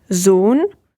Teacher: you have to be careful not to fall into the trap and pronounce it like the English S, but more like a Z